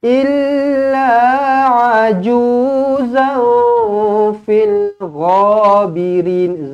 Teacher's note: Ain bukan hamzah. Jangan aju, salah. Tekankan di kerongkong.